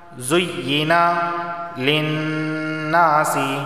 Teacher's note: نون پر تشدید ہے، غنہ ہوگا